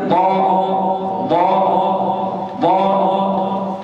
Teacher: من أدنى حافة اللسان هذا مخرج الضاد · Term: حرف الضاد